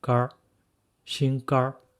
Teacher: Usually people speak it with a rhotic accent.